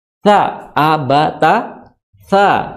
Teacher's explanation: Makhrajnya adalah di ujung gigi seri atas, ya. Ujung gigi seri atas. Jadi ujung lidah bertemu dengan ujung gigi seri atas. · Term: huruf sa